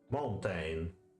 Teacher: of shoes interesting the next most common food is the church a stressed syllable or beat if you like followed by an unstressed one